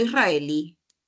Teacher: israelí es una palabra aguda. Mayor fuerza de voz en la última sílaba y además termina en vocal.